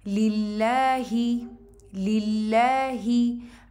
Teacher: word अल्लाह का जो लाम है उसको हम मुरक्कक यानी कि लाइट पढ़ेंगे